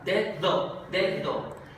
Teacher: Pronuncio la D normal, la que sería oclusiva, D, y luego uso la segunda, es fricativa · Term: alófonos distintos de la D